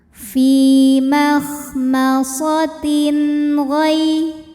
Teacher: Fi makhmasatin, tin, ada hukum izhar halqi, sebab ada tanwin kasrah yang menghadapi huruf halqi atau huruf tenggorokan, yaitu huruf ghain. Maka tanwin kita bunyikan dengan jelas, jadi bunyinya n ya